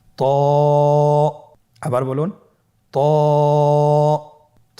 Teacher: এটা উচ্চারণের সময় অবশ্যই মোটা করতে হবে এবং উচ্চারণ করার সময় এক আলিফ টেনে পড়তে হবে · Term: মোটা হরফ